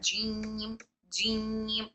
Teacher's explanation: जीम में जो टंग हमारी फ्लैट जा रही है वो इनफिता की वजह से जा रही है। इनफिता अलग से अप्लाई नहीं करना है।